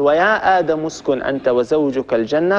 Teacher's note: فإن همزة الوصل ستسقط، لأن همزة الوصل كما مر معنا تسقط في درج الكلام، نبتدئ بها فقط، يعني احنا جبناها من أجل شيء معين، هو أن نتمكن من البدء بهذا الساكن، لأننا نحن العرب لا نستطيع أن نبدأ بساكن.